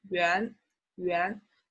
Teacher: the one you will say on the money or in any official document will be 元, rising tone